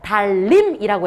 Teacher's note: 리을과 니은이 만났더니 발음 결과 달림이라고 해서 르르로 바뀌는 경우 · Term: 유음화